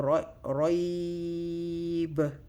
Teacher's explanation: So which is meaning it's not a mother letter. We're going to stretch the ya sound for 4 counts before we go to the last letter. So roib, 4 counts. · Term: harful lin